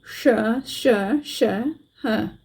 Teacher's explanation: अब इनका उच्चारण जब हम करते हैं श श श ह पहला हमारा तालव्य है फिर मूर्धन्य फिर दंत और फिर ह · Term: उष्म व्यंजन